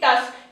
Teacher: এস আর কে দুটোরই sound আমার কানে আসছে এটা হচ্ছে আমার টার্মিনাল ব্লেন্ড